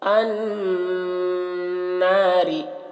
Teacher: नून मुशद्दद है तो गुन्ना करेंगे थोड़ी देर तक और थोड़ा खींचेंगे और रा को बारीक पढ़ेंगे। जैसे अन, देखिए इसे गुन्ना कहते हैं।